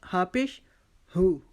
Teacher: یہ ہا حلق کے نیچے والے حصے سے ادا ہوتا ہے، جو ہمارا حلق سینے کی طرف جاتا ہے وہاں سے ہم اس کی آواز کو ادا کریں گے، اور حمزہ کی آواز کو بھی ادھر سے ہی ہم ادا کریں گے.